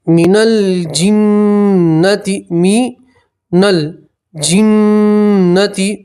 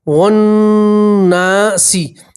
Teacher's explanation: یہ الف اور لام نہیں پڑھیں گے، واو کو سیدھا نون سے ملائیں گے